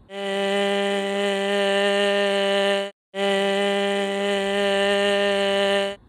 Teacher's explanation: I'm hearing white noise now there's a tone underneath but there's a lot of air leak and turbulent airflow